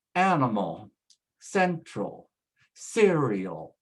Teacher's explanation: The same is true with words that end in AL. Again, we put the stress at the beginning